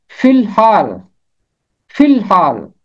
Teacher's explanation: چھوٹی اے کی آواز اور الف کی آواز خاموش ہو جائے گی، اور فے ملے گا لام کے ساتھ